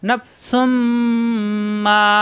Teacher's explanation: তানবিনের পরে মিম এই মিমে তাসরিদ ধরে গুন্না করে মিলাতে হবে তখন এই এক পেশ এসে মিমের সাথে গুণ হবে নাফসুম পরের